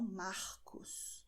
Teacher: em muitas regiões do Brasil, as pessoas dirão Marcos, ou seja, com o som da garganta. Isso é totalmente normal e é muito comum em muitas regiões do Brasil, ok?